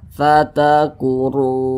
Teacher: Maka huruf yang di atasnya memiliki tanda seperti ini dibaca panjang. Mad tabi'i panjangnya 2 harokat.